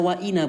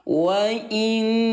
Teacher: kalau inna cara membaca gunnah yaitu dengan cara tahan 2 ketukan